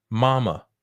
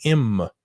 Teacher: the m is a bilabial sound